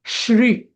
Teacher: श्री या शब्दाचा उच्चार हा नेहमी शला र श्री असा करायचा असतो